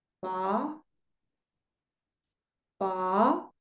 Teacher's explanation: el tono dos Es un tono que sube